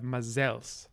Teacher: the stress stays on the second syllable, which then de-schwas and becomes e.